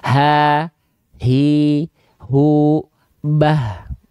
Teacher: Dari pangkal tenggorokan, bukan dari dada. Dari pangkal kerongkongan atau pangkal tenggorokan. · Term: ha besar